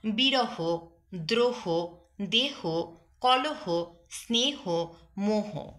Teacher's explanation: বিশেষ্য শব্দের শেষে হ থাকলে শেষের অ উচ্চারণ ও এর মতো উচ্চারিত হবে।